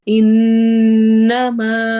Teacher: تجوید دیکھیں، انما نون پر ہم غنہ کریں گے اور ما میں الف مدہ ہے تو اس کو 2 حرکہ لمبا کرنا ہے